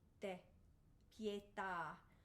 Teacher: You're going to want a really nice dental T here.